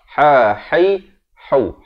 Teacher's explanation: Ha pada di pertengahan kerongkong.